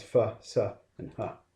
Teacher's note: they can partially obstruct the airflow